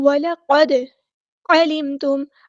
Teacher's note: عین کو وسطی لیکن مڈل تھروٹ سے ادا کرنا ہے · دال ساکن پہ کلکلا ہو رہا ہے